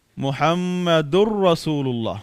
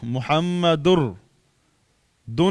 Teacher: نون تنوین را کے اندر مدغم ہوا، را پر شد آئی، اور تو ہم پڑھیں گے محمد الرسول اللہ. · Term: ادغام تام